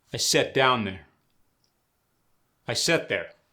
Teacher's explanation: For the words sit and sat, they both get changed to set.